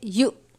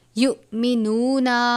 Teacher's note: حمزہ اور جزم ایک ساتھ ہو تو حمزہ ساکنہ ہوتا ہے، حمزہ ساکنہ ہو تو لفظ پر جھٹکا دیتے ہیں